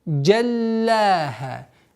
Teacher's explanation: Джаль удваиваем, а потом удлиняем с огласовкой фатха. Джаллаха. Аннулируется фатха.